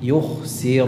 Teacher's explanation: sebagaimana umumnya ra damah itu dibaca dengan tafkhim